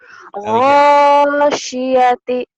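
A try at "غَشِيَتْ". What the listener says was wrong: Syatinya kayak orang Jawa. Gosyati. Gosyati pendek. Shin-nya keluarin.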